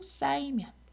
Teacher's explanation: 그리고 쌓이면 역시 히읗이 탈락하죠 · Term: 히읗 탈락